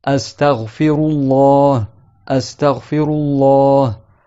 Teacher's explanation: quand le lam du nom Allah, il est précédé par un A, la fatha, ou une dhamma, alors il sera emphatique